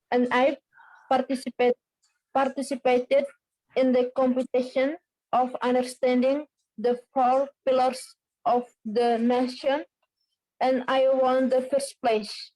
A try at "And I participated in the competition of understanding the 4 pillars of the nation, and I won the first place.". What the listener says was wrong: Very good. Ya, pengucapannya juga udah bagus banget ya.